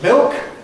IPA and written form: mɪlk (milk)